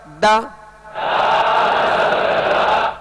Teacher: دال کا مخرج بھی الگ ہے، یعنی زبان کی نوک اور اوپر کے سامنے والے 2 دانتوں کی جڑ، یہ اس کا مخرج ہے دال کا